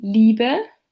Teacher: Let's start with a closed front unrounded vowel heard in libe while the short version e appears in bit.